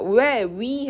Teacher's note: 왜, 위 해서 입술이 끝에가 찢어져요. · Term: 이중모음